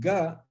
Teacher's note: in cairo alexandria and in uh parts of the delta the the nile delta uh ja is pronounced ga as a feeler the voice dealer stop and this has become